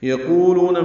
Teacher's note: قولو دونوں واو مدہ ہیں، 2 حرکات لمبے کریں گے